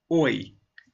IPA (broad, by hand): ɔɪ